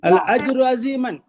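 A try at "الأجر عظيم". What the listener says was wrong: अजीमन नहीं है अजीमुन है। एक सेकंड चेक करो। मुब्तदा है क्या? अल है। रफा है क्या? है। अजीम में नकीरा है क्या? है।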